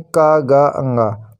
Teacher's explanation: अल्प प्राण जिन व्यंजनों के उच्चारण में कम हवा निकलती है